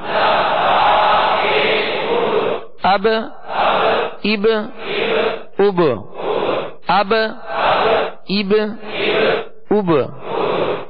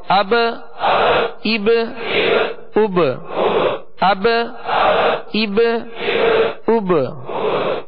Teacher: اب اس میں با کی ادائیگی ہوگی، با ساکن ہے اور با میں قلقلہ کریں گے، با حروف قلقلہ میں سے ہے.